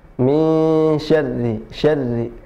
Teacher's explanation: huruf ra tidak banyak getarannya, beda dengan huruf r ya. Min syarri, syarri, tidak min syarri, tapi min syarri.